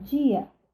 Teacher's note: É o mesmo caso de dia. Em decorrência do I, o D se torna uma africada. São casos de palatalização, nós veremos a seguir.